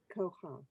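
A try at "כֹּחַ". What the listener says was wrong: Look at that last letter. We actually flip the way we say it.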